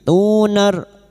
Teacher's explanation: Tu di mad ikuti wau sukun dua harakat mad thabi'i